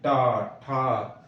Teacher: मूर्धन्य मतलब जीभ को घूमेगी